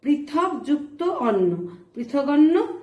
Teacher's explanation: অয়ের প্রভাবে পূর্ববর্তী ক হয়েছে গ।